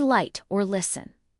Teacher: The tongue tip must touch the ridge right behind your front teeth. The alveor ridge. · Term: L sound